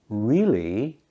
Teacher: saying really with a rising tone at the end shows surprise or or disbelief saying it with a falling tone might sound that you disagree